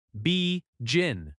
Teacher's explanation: Begin has stress on gin.